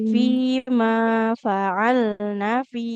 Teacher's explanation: nunnya fathah tidak ada alifnya enggak boleh kita panjangkan